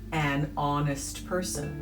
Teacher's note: It begins with an H, but it is silent. It starts with a vowel sound, ah.